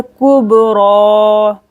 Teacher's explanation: कलकला करेंगे बा पर